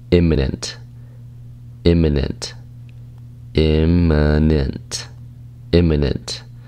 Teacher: it's three syllables and that stress is on the first syllable